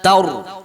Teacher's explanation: macam mana cara kita nak sebut dia dengan tepat, iaitu ta tu kita kena nipihkan. Taur. Kita tak boleh baca taur seperti seolah-olah kita tebalkan huruf ta tersebut.